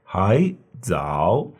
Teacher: when we have 2 third tones in the row, the first one changes to a second tone.